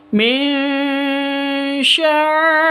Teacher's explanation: Jadi non sukun bertemu dengan shin, samar disertai dengung. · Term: ikhfa hakiki